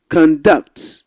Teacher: when you stress the first part of the word conduct it's a noun